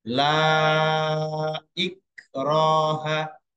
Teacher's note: Madi ketemu Hamzah beda lafaz jadi Mad Jaiz munfasid la ikroha lanya menjadi panjang lima harakat atau lima ketukan · La-nya menjadi panjang. Lima harokat atau lima ketukan. Karena mat tobi'i bertemu hamzah beda kalimat. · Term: mat jaiz munfasid